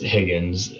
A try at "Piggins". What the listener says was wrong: Higgins with a P.